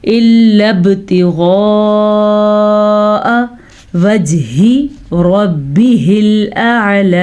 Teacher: غین کی مد دیکھ لیں آپ 5 الف کے برابر لمبی کرنی ہے. الا ابتغاء وجہ ربہ الاعلی، اگر آپ اس کو پڑھتے ہیں وجہی پڑھتے ہیں تو ٹھیک کر لیں، وجہی نہیں ہے، وجہ ربہ الاعلی.